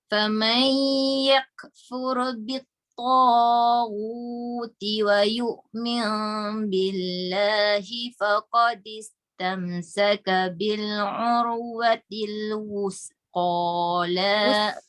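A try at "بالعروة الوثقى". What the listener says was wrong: Ujung lidah. Dia tidak boleh bunyi desiran.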